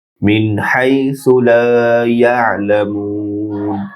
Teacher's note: লা ইয়ালামুন শেষে একালিফ না হয়ে তিন আলিফ লম্বা হবে · মিন নুনে গুন্না নেই, হাইসু হা ডিপ হবে, দ্রুত উচ্চারণ, সু সা নরম হবে, লা একালিফ লম্বা হবে, ইয়া আইন ডিপ হবে, লামু মু একালিফ লম্বা হবে, না শেষের নুনে জজম হবে ওয়াকফ হওয়ার কারণে।